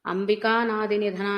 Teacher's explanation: తర్వాత అంబికా నాది నిధన అన్నప్పుడు మీకు ఆకారం కనిపించట్లేదు, అంబికా నాది అన్నప్పుడు ఆ అనాదిలో ఉన్న ఆకారం కూడా అంబికాలో ఉన్న కాలో కలిసిపోయింది అనమాట. రెండు వేరు వేరు పదాలు కలిసిపోయినాయి ఇక్కడ.